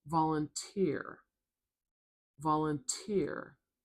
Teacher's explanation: a really sharp, loud T sound